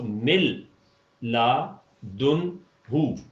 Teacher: نون کا وجود ادغام کامل کی وجہ سے ختم ہو جائے گا